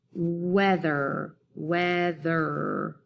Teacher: But weather has that schwa sound in the second syllable